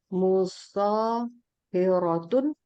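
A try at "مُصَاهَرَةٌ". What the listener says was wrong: Nah, jadi harus fathah itu tengahnya. Musoharotun, bukan musohi ya, musoha.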